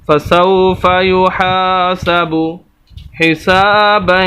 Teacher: سین کے آگے الف اور یہ الف مدہ، اس وجہ سے سین کو لمبا کر رہے ہیں